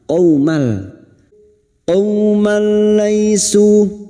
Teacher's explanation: Sekarang di sini kita wasol atau terus. Qaumal, fathah tanwin bertemu lam, idgham bila gunnah, masuk tanpa mendengung, masuk ke huruf lam tanpa mendengung, tanpa ditahan lama-lama. Qaumal, qaumal laisu, lai fathah bertemu ya sukun kita lunakkan.